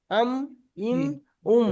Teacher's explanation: দুই ঠোঁটের শুকনো অংশ মিলিত উচ্চারিত হয় মিম